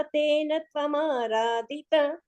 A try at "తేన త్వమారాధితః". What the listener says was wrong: అక్కడ తేన త్వమారాధిత అన్నప్పుడు తేన తర్వాత వచ్చిన తకారాన్ని కొంచెం 2 తకారాలుగా చెప్పాలి. దివ్యం వర్ష సహస్రమాత్త తపసా తేన త్వమారాధిత.